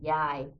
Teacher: If you put it like pronounced longer, like yai, it's grandma.